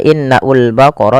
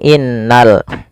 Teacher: Pada alif lam di sini lamnya ditampakkan dengan jelas. Ini bukan innaul baqara tapi langsung ke lam. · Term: alif lam qamariyah